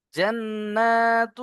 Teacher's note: জান্নাতু, এখানে দেখুন নুনের উপরে তাসদিদ দুবার পড়তে হবে, প্লাস নুন তাসদিদকে গুণনা করা ওয়াজিব